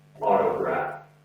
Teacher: T sound comes across as a D sound.